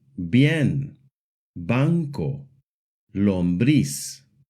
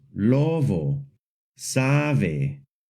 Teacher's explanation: We get a soft B sound when the B is between two vowels.